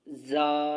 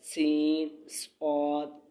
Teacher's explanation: ان 3 حروف زا، سین، صاد کو ادا کرتے وقت سیٹی کی طرح تیز آواز نکلتی ہے، اس لیے ان حروف کو حروف صفیریہ یعنی سیٹی والے حروف کہتے ہیں، جیسے زا سیٹی والی آواز، سین، صاد، تو یہ سیٹی والے الفاظ ہیں۔